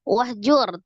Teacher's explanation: Alif dianggap tidak ada, wa langsung disukunkan ke huruf ha, hanya alirkan roh wahjur al-hams. Kemudian ro sukun sebelumnya dhamma di huruf jim, maka ro-nya dibaca tebal ya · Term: Tafhim